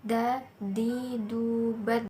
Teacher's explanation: Huruf Da keluar dengan cara menyentuh ujung lidah ke gusi bagian atas. Dalam keadaan mati, huruf Da terdengar suaranya memantul.